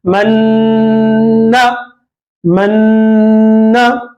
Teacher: नून की आवाज को नाक में घुमाते नून में मिला देंगे